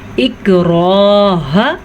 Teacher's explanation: इक्राह रॉ को पुर पढ़ेंगे, रॉ के ऊपर ज़बर की वजह से।